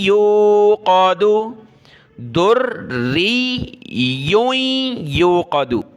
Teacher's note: इस रा को और या को हमने सख्ती के साथ पढ़ना है, तशदीद है, आगे भी सख्ती के साथ पढ़ना है, नाक में आवाज़ पैदा करेंगे